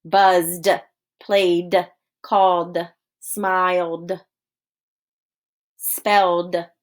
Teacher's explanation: when we add ed to the end buzzed played called smiled spelled you just hear the d